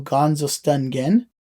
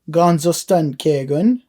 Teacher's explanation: So we're changing our M sound to an N sound